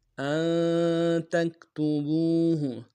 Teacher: ولا تسأموا أن تكتبوه، ان حمزہ کو نون ساکن کے ساتھ ملانا ہے، نون ساکن میں یہاں پہ اخفا ہوگا، یعنی اخفا ناک میں آواز کو لے کے جائیں گے